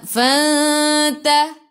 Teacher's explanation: Jadi ikhfa hakiki dengan 2 harakat bawa ke sisi huruf ta.